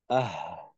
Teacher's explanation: হা উচ্চারণ করার সময় কিন্তু হলকের শুরুতে একটু চাপ দিলাম, হালকা চাপ। কিন্তু হলকের চাপটা এমন ভাবে দিলাম না যে হলকের একেবারে বন্ধ হয়ে যায় বা আটকাইয়া যায় বাতাসটা, এমন ভাবে না।